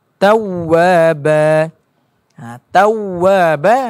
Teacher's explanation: Dan satu-satunya huruf yang perlu dibaca dengan yang perlu dimunculkan ke mulutnya iaitu ialah huruf waw. Huruf waw ini perlu memunculkan pada kedua-dua bibir kita.